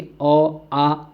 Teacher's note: जब हमारा अ बोलते हैं ना, अ आ, तो दोस्तों कंठ से निकलते हैं। आप बोल के देखिए, आप अपने गले में हाथ रखिए कंठ में, तो बोलिए कि अ आ, तो कहीं ना कहीं हलचल होगी हमारे कंठ के अंतर्गत।